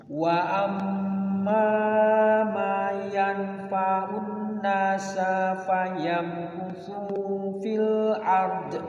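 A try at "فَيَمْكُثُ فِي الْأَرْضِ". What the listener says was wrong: Su-nya pendek.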